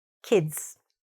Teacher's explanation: don't stretch the i, don't say e, say kids, the short i.